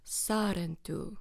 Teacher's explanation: the stress syllable is on the sa at the beginning of the word. So sar, and then it also has a tapped r, so Sarentu, and it like pulls in kind of.